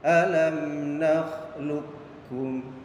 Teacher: Dan contohnya di sini idgham mutaqaribain huruf qaf sukun yang bertemu dengan kaf yaitu alam nakhluqukum. Jadi cara bacanya qafnya tidak dibaca qalqalah, jadi tidak dipantulkan. Jadi suara huruf qaf itu dimasukkan kepada huruf kaf.